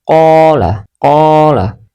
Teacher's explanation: panjangkan bunyi huruf tersebut tepat dua ketukan atau sepanjang satu Alif. Yang kedua, tidak boleh kurang atau dibaca pendek dan tidak boleh lebih atau terlalu panjang. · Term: Mad Thabi'i